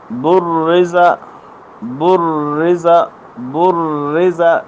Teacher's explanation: یہ را باریک ہے اپنی حرکت کے اعتبار سے